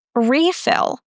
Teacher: But when we use it as a noun, we stress the first syllable, refill.